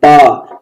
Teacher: पा में देखो ओठ टच हो रहे हैं, पा, तो पा वर्ग ओठ से होता है।